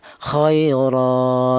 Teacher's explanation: Setiap huruf apapun di mana dia berupa tanwin fathah selain tak marbutoh ya, itu dibaca mad iwad, yaitu cara bacanya tanwin fathah ini dibaca seperti fathah biasa. Adapun panjangnya yaitu 1 alif atau 2 harokat atau 2 ketukan.